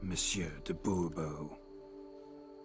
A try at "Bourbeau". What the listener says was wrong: The emphasis falls on the last syllable. Bourbeau?